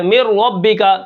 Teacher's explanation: من ربک سے یہاں پر ادغام ہے، من ربک نون غائب ہو جائے گی